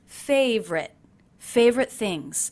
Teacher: I'm dropping the middle unstressed syllable in favorite. So it's not favorite, but simply favorite.